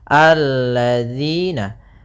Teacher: mad tabi'i, yaitu kasrah bertemu ya sukun, panjangnya 2 harakat · hati-hati dalam pelafalan jangan dibaca allazina. Yang sering terjadi kesalahan adalah membacanya zal dengan zai.